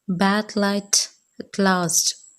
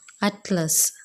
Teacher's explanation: But this happens when t, d are followed by l, that is, one or both sides of tongue are lowered and allow the air to escape and the tongue tip contact remaining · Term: lateral